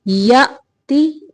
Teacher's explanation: حمزہ کو جھٹکے سے پڑھیں گے